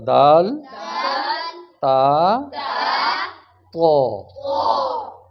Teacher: जुबान लग रही है ऊपर वाले दांतों के पीछे